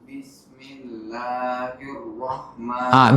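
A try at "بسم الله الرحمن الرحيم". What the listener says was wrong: Bukan hirroh, bukan hirroh, hirrah. Beda ro, hirroh. Kan kalau roh berarti kan ha gede. Hirrah.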